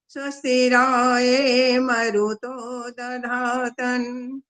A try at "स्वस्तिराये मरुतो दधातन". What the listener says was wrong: 4 गलतियां हो गई। दधा तन भी गलत हुआ है अंत में। दधा तना होता है, न पूरा होता है, हलंत नहीं होता ये। कुल मिला के 4 गलतियां आपकी।